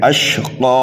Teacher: من یخشی ویتجنبها الاشقی، یہاں پر بھی دیکھیے قاف کے اوپر اگرچہ زبر ہے لیکن یہاں پر ہم قاف کو ساکن نہیں کریں گے بلکہ کھڑا زبر لگا کر کے پڑھیں گے جب وقف کریں گے تو، ٹھیک ہے۔ اشقا 1 الف کے برابر کھینچ کر کے پڑھیں گے، اور یہ قاف حروف مستعلیہ میں سے ہے، موٹا کر کے پڑھیں گے۔ اور اگر ملا کر کے پڑھنے لگے تو پھر کھڑا زبر نہیں پڑھنا ہے بلکہ اس قاف کو متحرک ہی پڑھنا ہے، ٹھیک ہے۔